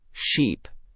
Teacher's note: For the long EE in sheep, your lips spread wider and your tongue rises higher and more forward, and you hold the sound noticeably longer.